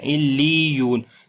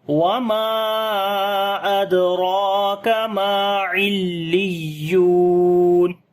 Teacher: لی تب ہی ہوگا کہ جب ہم یا کی آواز کو اونچا کریں گے نبر کے ساتھ